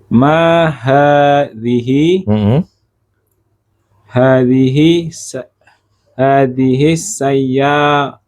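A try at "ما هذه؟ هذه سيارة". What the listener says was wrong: Iya, soalnya tadi hadihis, antum gitu ya. Hadihis dengernya kayak gitu. Hadihi sayyaratun tanpa alif lam. Kalau alif lam memang hadihis.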